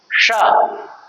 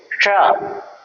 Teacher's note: पहले वाले सा का जो पहले स्थान पर है उसको क्या कहेंगे, श, मतलब तालु के पास ले जाइए अपने जीभ को, जीवा को, अपनी जीभ को तारु में टच करवाइए, श, ठीक है, हो गया।